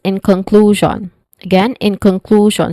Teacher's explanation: conclusion it's it has um the stress syllable is on the second syllable clue which has a long ooh sound